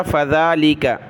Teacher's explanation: ذال پر کھڑا زبر ہے، ایک الف کی مقدار اس کو کھینچا